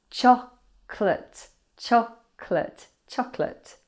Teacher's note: Chocolate has a silent Oh. So just two syllables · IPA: /ˈtʃɒ-klɪt/